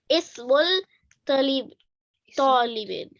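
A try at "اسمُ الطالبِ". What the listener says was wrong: तालिबी, हाँ इसको दोबारा पढ़े, इस्मुत तालिबी। लाम पे तो कुछ भी नहीं है, अलिफ पे भी कुछ नहीं है, तो इसको नहीं पढ़ेंगे, ठीक है ना, जो खाली होता है उसको नहीं पढ़ते, इसको पढ़ेंगे तोइन को, तो इस्मुत तालिबी।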